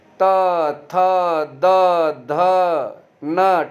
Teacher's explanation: और जब आप ये त बोलोगे तो इसमें दांत का स्पर्श आपको होता हुआ नजर आएगा